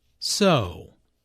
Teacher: notice how the O sound is drawn out here, combined with the intonation which shows boredom.